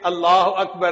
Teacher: پھر یہ بھی سن لیجئے کہ لفظ اللہ سے پہلے اگر کوئی لفظ ہے اور وہ مفتوح ہے یا مضموم ہے تو اللہ کا جو لام ہوتا ہے نا اس کو پر پڑھتے ہیں، اس کو تفخیم کہتے ہیں قراء کی زبان میں۔